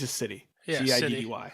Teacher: Yeah, I can't say the fucking T's like city. it always takes on like a D sound.